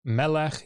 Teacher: Notice it's a segelet. Melech, you get the penultimate stress, tone on the penultimate syllable.